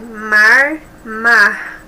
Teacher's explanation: o R é pronunciado de maneira forte no interior de São Paulo, no sul de Minas Gerais, no norte do Paraná e no Mato Grosso do Sul.